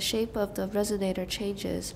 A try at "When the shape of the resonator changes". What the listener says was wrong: Okay, and here we wouldn't stress the last two words because we were repeating them. What's new?